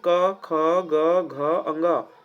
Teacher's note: क वर्ग जो कि कंठ से बोला जाता है। कंठ से बोला जाता है अर्थात है कि इसका जो उच्चारण स्थान है यानी कि जब हम इसका उच्चारण करते हैं तो कंठ से करते हैं। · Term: कंठव वर्ण